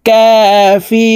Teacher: রু এখানে 3 আলিফ টেনে নুনকে সাকিন করতে হবে, কারণ মদের হরফের বামের হরফে ওয়াকফ হইলে মধ্যে আরজি 3 আলিফ টানিয়া পড়িতে হয়।